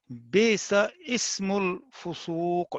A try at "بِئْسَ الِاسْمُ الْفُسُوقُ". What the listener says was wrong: نہیں، بئس الاسم الفسوق، اصل میں ہمارا جو مطمع نظر ہے نا وہ ال کے اوپر ہے، کیونکہ لام کو ساکن دیکھیں نا پہلے، الاسم الفسوق، بئس علیحدہ ہے نا، تو جب